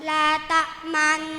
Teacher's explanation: Ismam ialah mencucu di tengah-tengah dengung sebagai isyarat bunyi dhammah.